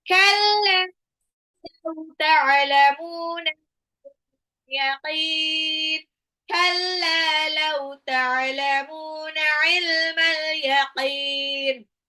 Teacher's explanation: Ta'lamuna mimnya mad tabi'i karena dhammah ketemu waw sukun.